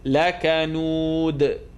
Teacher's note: It's going to bounce at the end.